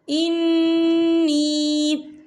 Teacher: نون مشدد ہے تو یہاں پر غنہ ہوگا، اور نی یہاں پر یا مدہ ہو رہا ہے، یا ساکن ہے، یا ساکن سے پہلے زیر ہے، تو ہم اسے 2 یا 3 حرکت کے برابر کھینچ کے پڑھیں گے۔